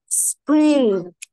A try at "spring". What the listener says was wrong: تنطقيش الجي، احنا قلنا الان بعد الجي ما بننطقهاش، نقول سبرين سترينج